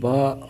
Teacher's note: با ہونٹوں کے گیلے حصے سے ادا ہوتی ہے۔ با، یہ دیکھیں، یہ ہونٹ ہے، ان کا جو گیلا حصہ یعنی کہ دونوں کا اندرونی حصہ جو ہے اس سے با ادا ہوتی ہے، با۔